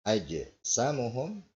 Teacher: huruf jim disukun di tengah kalimat, ini qalqala sughra ya